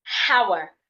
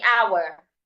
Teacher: The letter H should not be heard.